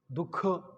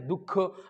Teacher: जिथं बी दिला जातो विसर्ग, तिथं आपल्याला श्वास बाहेर सोडल्यासारखं वाटतं, म्हणून विसर्ग म्हणजे श्वास सोडणे.